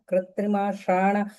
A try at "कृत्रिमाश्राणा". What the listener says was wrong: Rana. There you have the dirgha.